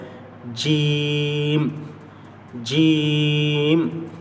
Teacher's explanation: یہ زبان کا بیچ والا حصہ اوپر کے تالو پر لگائیں گے، بالکل اوپر، بیچ کے زبان کے بیچ کے اوپر کا جو تالو وہاں پر لگائیں گے تو جیم جیم۔